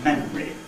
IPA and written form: ˈmemri (memory)